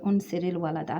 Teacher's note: the Ra, it was in a state of sukoon, and it becomes in a state of kasra to join. Okay, so the first sukoon will change into a kasra.